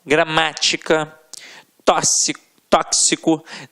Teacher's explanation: a sílaba tônica sempre na antepenúltima sílaba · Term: proparoxítonas